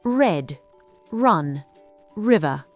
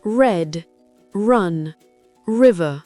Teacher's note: Le R anglais est très différent du R français. La langue ne vibre pas et ne touche pas le fond de la gorge. Elle se recule et se courbe légèrement.